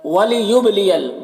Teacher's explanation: با حروف قلقلہ میں سے ہے، با میں قلقلہ کریں گے